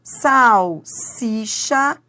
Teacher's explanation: Em salsicha eu tenho uma consoante seguida da outra e as duas são pronunciadas. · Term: encontro consonantal